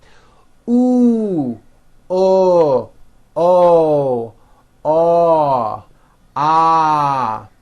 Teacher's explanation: Okay, now let's do back vowels. Again, vowel sounds move from high to low.